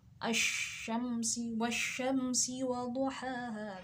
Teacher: Sedangkan al yang kedua, al syamsiyah tadi, sebab seperti lafaz asyams, asyams wajibnya idgham atau masuk melebur pada huruf sesudahnya. Jadi meleburkan huruf ya, idgham.